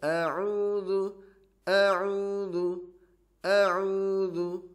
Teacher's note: huruf ain makhrajnya di tengah tenggorokan atau tenggorokan tengah. Beda dengan hamzah yang berada di tenggorokan bawah.